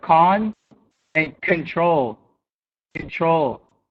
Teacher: we're going to reduce the first syllable of the word so con and control control now i put the emphasis here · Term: reduced syllables